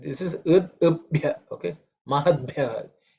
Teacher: Mahadbhya, and Bha is again, as I said, it has to be aspirated.